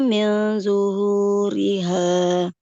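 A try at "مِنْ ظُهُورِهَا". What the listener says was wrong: Minnya kurang ditahan. Kepanjangan.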